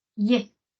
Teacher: Tenemos el diptongo ye, donde nuevamente va a sonar más la E, la vocal abierta, ye. Tenemos el diptongo yo, donde suena más la O.